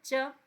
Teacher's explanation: तालु जो होता है, तालु अब समझ आएगा, दांत और मूर्धा के बीच का जो चिकना सा हिस्सा है। च बोलो, च, तो दांत से थोड़ा सा पीछे लगता है, उसको हम तालु बोलते हैं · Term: च वर्ग